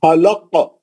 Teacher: پہلا خا جو ہے اوپری حلق کا ہے، کھردرا آواز ہے، بھاری آواز ہے